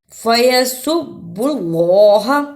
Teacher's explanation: اللہ کو اس لیے پر پڑا کہ اللہ سے پہلے پیش تھا، اس لیے اس اللہ کو موٹا یعنی پر پڑھنا ہے